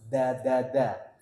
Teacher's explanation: kalau da tempatnya di mana ujung lidah bertemu dengan pangkal gigi seri atas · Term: Dal